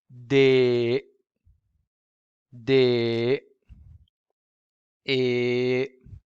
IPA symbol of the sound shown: e